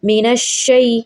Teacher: مینش، اور اس پہ سختی کرنا، ذرا رک کر اس کو پڑھنا۔ مینش شی، شین یا زبر شی یا لین کہلاتا ہے، اس کو جلدی سے نرمی سے پڑھا جائے گا